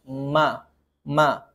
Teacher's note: Mim makhrajnya adalah dua bibir. Dua bibir bertemu ma. ma dan ada disertai dengan dengung tambahan sedikit ke hidung. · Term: huruf mim